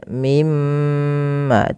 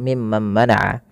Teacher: ketika kita membaca mim tasydid ini, itu perlu ditahan suara gunnahnya ya, atau menahan suara mimnya. Mimma, tidak langsung mimman mana'a.